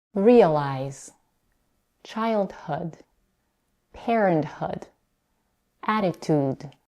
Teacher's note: have the secondary stress on the suffix and the primary stress is on the stem